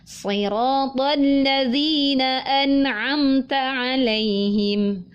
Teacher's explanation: Nah, sekalipun an itu idhar halki, kemudian amta itu idhar syafawi, tetap kedua huruf itu harus ditunaikan sifat dengungnya karena huruf nun dan mim memiliki sifat wajib yaitu dengung. Maka kadar dengungnya kita sesuaikan dengan kondisi hurufnya.